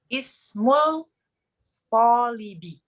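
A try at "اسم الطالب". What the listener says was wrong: Tapi ini alif lamnya syamsiah, Om. Ismut.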